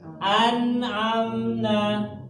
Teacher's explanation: nun sukun ya, ketemu dengan huruf ain. Bacanya jelas. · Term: huruf izhar